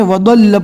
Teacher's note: مصری جو قرہ ہے اس کو ذال کی شکل میں وضل پڑھتے ہیں